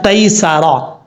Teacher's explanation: سین سیٹی کے ساتھ پڑھا جائے گا، را کے اوپر زبر ہے، را پر پڑھا جائے گا. یہاں پر جو یا ہے یہ یا لین ہے، یہ یاد رکھیے گا.